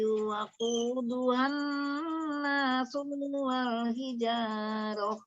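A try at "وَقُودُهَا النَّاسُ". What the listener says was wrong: Waquduhan nasual, su-nya pendek, ulang.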